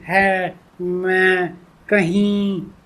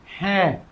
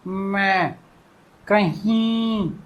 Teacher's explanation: हवा मुंह और नाक दोनों से निकलती है बाहर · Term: अनुनासिक